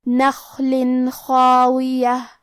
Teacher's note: خا حروف الاظہار میں سے ہے، تو ہم تنوین کو ظاہر کریں گے اور بغیر غنہ سے یہ حکم کو ادا کریں گے